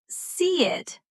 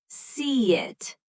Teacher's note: And see it, since C ends in a vowel sound and it starts with one, it becomes see it, with a small Y connecting them. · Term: soft Y sound